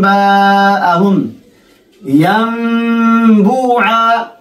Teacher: إذن نقلب النون الساكنة إلى الميم